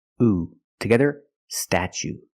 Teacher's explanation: for the second syllable we use the long u like Boot and moon